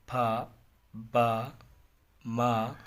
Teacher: बाइलेबियल्स क्या हैं, वो कहता है sounds produced when both lips join together